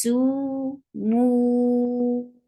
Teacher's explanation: su will stay 2, and mu will be changed 4 counts long because of this temporary sukoon.